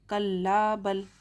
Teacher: यहाँ पर सख्ता की अलामत आई है, इसलिए सांस को कुछ देर रोक कर रखेंगे।